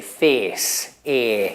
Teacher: The Queen sometimes still says face. And if you come from Northern England, you tend to say face, e. You don't have a diphthong, you have e.